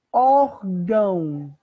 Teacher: a sílaba tônica não é o gão, a sílaba tônica é o or